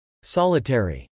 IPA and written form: sˈɑlət.ɛri (solitary)